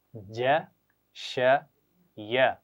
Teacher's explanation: جیم, شین اور یا کی آوازیں زبان کے درمیان اور اوپر کے تالو سے ادا ہوتی ہیں, یعنی زبان ایسے درمیان سے اوپر اٹھتی ہے.